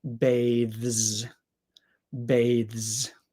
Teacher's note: because it is a voiced th sound the S is going to make more of a z sound